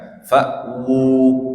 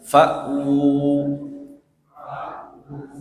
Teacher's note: Karena waw itu keluar dari dua bibir.